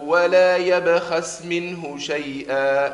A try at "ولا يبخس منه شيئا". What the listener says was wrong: فخم شوي الخاء.